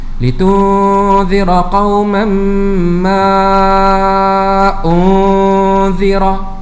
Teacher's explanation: huruf mad iaitu alif ataupun waw ataupun ya berjumpa dengan hamzah dalam dua kalimah, hukumnya adalah mad jaiz munfasil dan dibaca dengan kadar 4 harakat